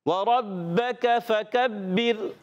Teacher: रा साकिन से पहले ज़ेर आने की वजह से रा हो जाएगी बारीक